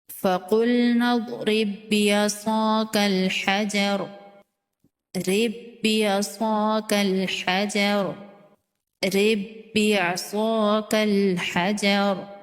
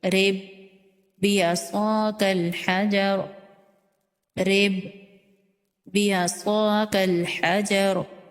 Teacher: ایسا لگ رہا ہے کہ ہم تشدید والے با کو پڑھ رہے ہیں، جزم والا با تشدید والے با میں مدغم ہو رہا ہے۔ اگر اس کو ایسے پڑھیں، رِبْ بِعَصَاكَ الْحَجَرَ، رِبْ بِعَصَاكَ الْحَجَرَ، الگ الگ کر کے، تو یہ غلط ہو جائے گا۔ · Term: ادغام مثلین